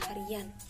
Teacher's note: Contoh lain yang telah disebutkan tadi pada kata dalam proses pengimbuhan sufiks an pada dasar hari, yang mana akan memunculkan atau akan menimbulkan semivokal Y seperti hari ditambah an akan menjadi harian